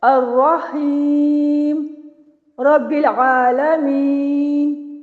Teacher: آپ 2 الف یعنی 4 حرکات کے برابر وقف کریں گے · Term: توسط